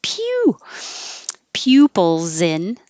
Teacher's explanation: that s is a z and it will connect